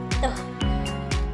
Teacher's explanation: Salah satu contohnya yaitu bunyi plosive, yaitu aliran udara dihentikan sepenuhnya